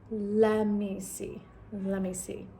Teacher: the T completely disappears